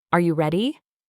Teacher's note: The important part is the stress on ready and the rising tone at the end.